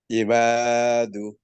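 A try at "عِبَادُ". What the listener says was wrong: ই আইন উচ্চারণ সুন্দর করতে হবে। ইবাদু।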